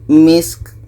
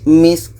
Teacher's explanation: ka ini ada hamasnya, ada anginnya